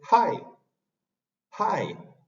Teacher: dice Hi Hi ese ha es una exhalación entonces esa exhalación Muchas veces el hispanohablante tiende a decirla como ha como una J pero yo tengo que bajar un poco la lengua · la H suena como una exhalación